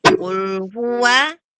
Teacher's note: Wa-nya adalah huruf yang tipis. Wa kemudian bertemu dengan huruf tebal.